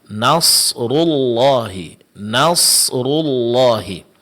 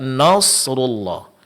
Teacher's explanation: Nasrullahi perlu diperhatikan di sini yang ditebalkan di sini ada huruf shad dan huruf ra setelahnya karena huruf rnya berbaris depan. Sedangkan huruf nun sebelumnya ini tetap tipis. Jangan sampai terpengaruh oleh huruf shad.